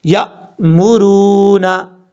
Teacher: را کے بعد واو مدہ ہے، ایک الف کی مقدار لمبا کر کے پڑھیں گے